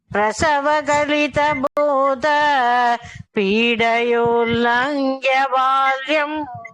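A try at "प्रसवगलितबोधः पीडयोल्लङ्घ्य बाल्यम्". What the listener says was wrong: அங்க மூச்சு எடுக்கக்கூடாது, அங்க மூச்சு எடுக்கக்கூடாது. அந்த விசர்க்கத்துக்கு ஹாஃப் பா உச்சரித்து அது கனெக்டிங் லெட்டர். பிரசவகலித போத பீடயோல்லங்க்ய பால்யம்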